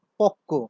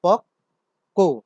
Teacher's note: পক্ক শব্দটিতেও আমরা দেখতে পাচ্ছি ক কিন্তু একটি, নিচে ব যুক্ত হয়েছে, বফলা যুক্ত হয়েছে, কিন্তু তার উচ্চারণ যখন আমরা দেখছি বা লিখব তখন দেখতে পাচ্ছি পক কো। বয়ের কারণে, বফলার কারণে আগের ক ধ্বনিটি দ্বিত্ব হয়েছে।